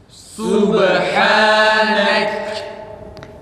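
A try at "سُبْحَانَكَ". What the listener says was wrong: Nek değil. Subhanek. Arkadaşlar kalkale ötüreden sonra dikkat edin. Subhanek. Kalkale net çıksın.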